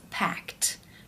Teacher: For example, the word pack. When you add the ed, it becomes packed because the k sound is unvoiced.